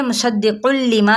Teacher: تنوین پیش ہے نا اور آگے لام آ رہا ہے، تو یہ مصدق لما یہاں پہ ہم ٹھہریں گے نہیں، بغیر غنہ کے کریں گے